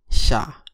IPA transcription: ɕ